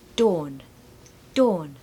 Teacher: don't pronounce that r